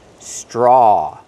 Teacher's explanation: We see the TR together making the ch sound, like train and truck.